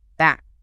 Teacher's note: a totally different mouth shape with the lips closed and then bursting open